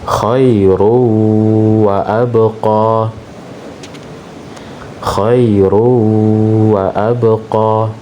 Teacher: Jadi tanwin bertemu dengan huruf waw. Maka tanwin dimasukkan atau dileburkan ke huruf waw disertai dengan gunnah.